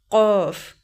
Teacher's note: یہ جو 2 نقطوں والا قاف ہے اس کو حلق سے ادا کریں گے